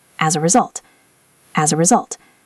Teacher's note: The s in as sounds like a z as. and we link it to the a.